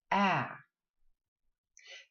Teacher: the tongue is quite flat it's just at the front of it with the tip of it anchored behind the teeth ah and in that way you push the sound forward Apple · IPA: æ